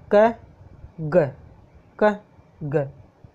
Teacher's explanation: Plosive इसके जो sound होता है वो गति से निकलता है, क ग, अच्छा जी, ये हो गए अपने प्लोसी वाले हो गए।